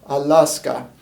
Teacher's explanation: then an l and then a long a allah allah allah followed by an s with no vowel and then we have a k followed by a long a vowel again